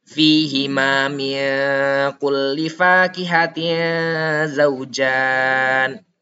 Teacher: Cara bacanya seperti yang saya katakan sebelumnya adalah dengan dua harakat dan disamarkan baca nunnya. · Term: ikhfa